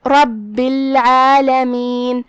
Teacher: عین کی ادائیگی حلق کے درمیان والے حصے سے ہے. اس کے بعد یہاں چھوٹا سا مد ہے.